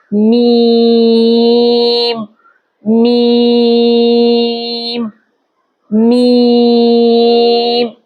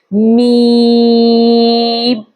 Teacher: ناک سے غنّے کی شکل، ناک سے غنّے کی آواز نکلے گی